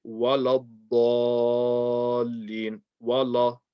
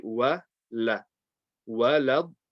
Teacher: The waw will be light, the lam will be light, the dad will be heavy.